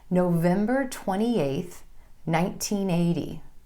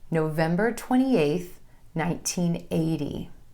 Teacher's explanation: with my emphasis falling on the number, then a pause, then the year